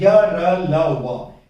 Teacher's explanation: इनके उच्चारण में मुंह के अंदर यानी प्राणवायु जो है हमारी मुंह के आंतरिक भाग को किसी भी ढंग से अच्छी तरह से स्पर्श नहीं करती। ठीक है, पूरी तरह से स्पर्श नहीं करती, या जीवा पूरी तरह से स्पर्श नहीं करती, इसीलिए इनको कहा गया है अंतस्थ व्यंजन।